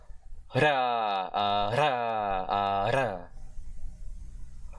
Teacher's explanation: you have to fling your tongue at the retroflex region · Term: voiced retroflex tap/flap consonant